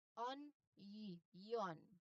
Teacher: Onion often includes a Y sound after the N. On, yon. There's also a letter Y sound there.